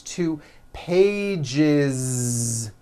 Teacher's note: One page becomes two pages with that voiced Z.